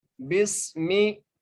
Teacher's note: با کو سین سے ملائیں گے اور سین کو سیٹی کے ساتھ پڑھیں گے